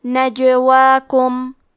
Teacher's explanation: یہاں جیم کا حکم ہے قلقلہ. قلقلہ کا معنی ہے حرف ساکن کو ہلانا تو ہم حرف الجیم کو ہلاتے ہوئے یہ کلمہ کو پڑھیں گے